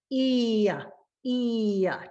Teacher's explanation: when I say E, I pull back the muscles and I get very close to that Y sound.